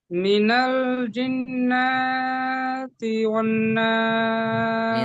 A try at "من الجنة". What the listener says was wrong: মিনাল জিন্না কেন টান দিলেন এখানে? নুনের উপর কি আছে? জাবার আছে হারাকাতের পড়া কি করে পড়তে হবে? তাড়াতাড়ি পড়তে হবে না?